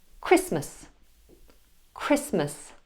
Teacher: as a consonant cluster for example in the word Christmas Christmas notice how I don't pronounce the T at all